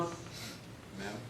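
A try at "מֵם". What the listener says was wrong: Mame. Make certain you get that A sound in there. Mame.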